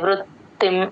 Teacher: ఋ తేల్చి చెప్పాలి త కింద త వత్తు వినిపించాలి